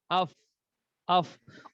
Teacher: اوپر والے دانت اور نیچے والے ہونٹ، اس سے فا ادا ہوگا، ٹھیک ہے۔ ہاں، اب اگر ہم فا کو مخرج کے ساتھ ادا کریں گے پھر تو ٹھیک ہے، ورنہ یہ فا پا ادا ہو جائے گا، پیل ہو جائے گا، فیل کی جگہ، ٹھیک ہے۔ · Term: فا کا مخرج